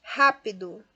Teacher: Rápido recebe acento, sim, na primeira sílaba, porque de trás para frente é a terceira, e ra é a sílaba tônica mais forte